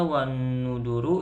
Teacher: Yang selanjutnya wanuduru yaitu gunah. Keterangannya ada huruf nun yang berharokat tasjid. Cara membacanya dengung.